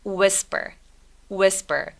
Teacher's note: WH일 때 보통 H 소리 사라져서 whisper라고 소리 많이 냅니다. Whisper보다는 whisper.